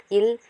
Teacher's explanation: மேல்வாய் பல்லின் அடியை நாவின் ஓரங்கள் தடித்து நெருங்குவதால் பிறக்கின்றது. இல் மேல்வாயை நாவின் ஓரங்கள் தடித்து தடவுவதால் பிறக்கின்றது.